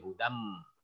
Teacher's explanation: Hudam itu ditahan se 2 harkat. Hudam didengung, digunahin. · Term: idgham